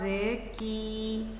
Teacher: काफ जो है ज़ुबान के दरमियानी हिस्से को तालू के सख्त हिस्से से लगाकर अदा किया जाता है। इसकी आवाज़ बारीक है।